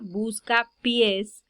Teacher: tenemos una palabra que aquí le recae el acento en la última sílaba